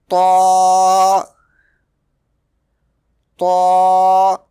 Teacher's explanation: Ta will be pronounced from the tip of the tongue touching the roots of the top two front teeth.